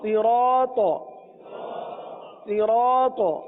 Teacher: یہاں پر بھی آپ کو را کے ساتھ الف نظر آ رہی ہے، صحیح ہے؟ اس الف کو بھی پور پڑھیں گے کیونکہ الف سے پہلے والا حرف را پور ہے، لہذا الف کو پور پڑھیں گے۔